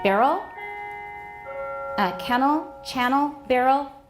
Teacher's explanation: None of these for me are syllabic. I have a schwa in all of them.